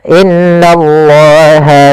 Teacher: Kemudian innallaha kemudian pada lafal la tipis yaitu ketemu dengan alif maka dia hukum tajwidnya namanya mad thabi'i. Yaitu fathah bertemu alif panjangnya dua harakat.